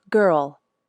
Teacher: the back of the tongue is up for the G sound then it slides back to make the ER sound keep the tongue up and push the sides of the tongue